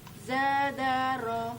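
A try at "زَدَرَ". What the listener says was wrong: Coba zanya tidak usah dipanjangkan.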